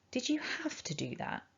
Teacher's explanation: i've chosen here to emphasize have to make my point to show the frustration · say it again did you have to do that so there we've got the strong form with the ah have